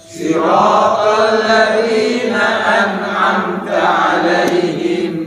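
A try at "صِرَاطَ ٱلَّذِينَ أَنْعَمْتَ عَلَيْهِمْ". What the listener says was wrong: Masih ya huruf shin, ditukar dengan huruf shin, salah ini. Ya, huruf shad. Shad.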